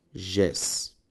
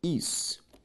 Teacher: Perceba que as duas palavras são palavras oxítonas, pois a última sílaba das duas é tônica.